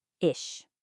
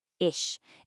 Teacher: if ch comes after a front vowel like e or ih, it's a much softer sound made at the front of your mouth.